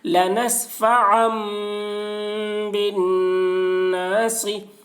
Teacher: زیر کو جلدی پڑھیں، تھوڑا بھی نہ کھینچیں، معروف پڑھیں، مجہول آواز سے بچیں۔ لنسفعا بالناصی، یا زبر یا کے اوپر زبر ہے، زبر کو جلدی پڑھیں، تھوڑا بھی نہ کھینچیں۔